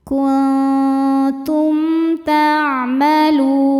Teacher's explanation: Selanjutnya ada hukum izhar syafawi. Karena mim sukun berhadapan dengan huruf yang bukan mim atau ba, maka mim sukun dibaca jelas.